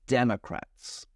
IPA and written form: ˈdɛməkræts (Democrats)